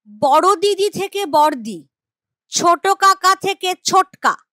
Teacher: শব্দের মধ্যে পাশাপাশি একই ব্যঞ্জন ধ্বনি থাকলে উচ্চারণে একটা লোপ পাবে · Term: সমক্ষর লোপ